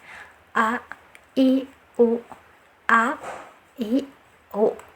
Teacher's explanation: ya tertahan dari segi nafas dan segi udara a i u jadi ada seperti suara yang tertahan ya ketika pengucapan huruf hamzah